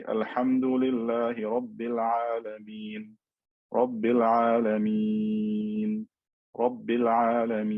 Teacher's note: because this sukoon has appeared, but it's not original, I can stretch it for 2, 4, or 6 harakat. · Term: al-med al-aarid lis-sukoon